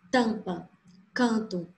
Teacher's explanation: não existe o som do M ou do N dentro da palavra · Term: vogais nasais